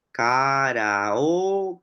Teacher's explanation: en karaoke aparece una oclusiva velar sorda, la K, o el sonido que está implícito dentro de una K.